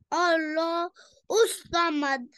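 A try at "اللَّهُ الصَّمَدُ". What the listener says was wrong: सौद को हैवी करें।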